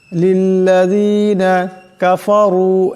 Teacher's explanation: রার উপর পেশ আছে, আওয়াজটাকে মোটা করিয়া পড়তে হবে।